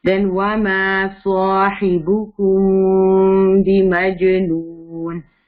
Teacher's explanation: وما ما کو ٹو حرکت اسٹریچ کریں گی, سو ٹو حرکت اسٹریچ بھی ہوگا اور ہیوی بھی ہوگا.